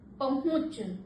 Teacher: उ की आवाज हम नाक से और मुख दोनों से बोल रहे हैं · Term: चंद्रबिंदु, अनुनासिक